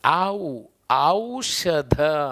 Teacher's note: ಆ ಮತ್ತೆ ಊ ಎರಡು ಧ್ವನಿಗಳಿದಾವೆ ಇಲ್ಲಿ · ಅ ಮತ್ತೆ ಉ ಎರಡು ಧ್ವನಿಗಳು ಎರಡು ಅಕ್ಷರಗಳು ಸೇರಿ ಒಂದು ದೀರ್ಘ ಸ್ವರ ಆಗಿದೆ ಹಂಗಾಗಿ ಇದನ್ನ ನಾವು ಸಂಧ್ಯಾಕ್ಷರ ಅಂತ ಗುರುತಿಸ್ತೀವಿ ಹಂಗಾಗಿ ಕನ್ನಡದಲ್ಲಿ ಎಷ್ಟು ಸಂಧ್ಯಾಕ್ಷರಗಳನ್ನ ನಾವು